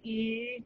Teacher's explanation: Just plain E does not have anything in that vowel that sounds like R, like an R sound.